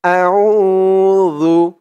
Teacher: উ একালিফ টান, পেশের পরে ওয়াও সাকিন · জালের উচ্চারণটা একদম নরম পাতলা হবে, জিহ্বার মাথা উপরের দাঁতের মাথার সাথে লাগবে জালের উচ্চারণটা করার সময়।